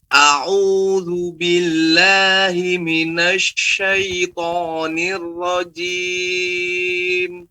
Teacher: Lihat huruf A jangan O ya, tapi lebarkan, istifal kan A.